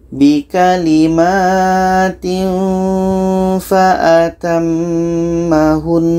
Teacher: Kalau kita berhenti, nun ini tetap kita dengungkan dulu